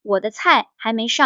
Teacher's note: 还读2声，没轻读，上4声